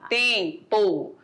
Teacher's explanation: O M está nasalizando a vogal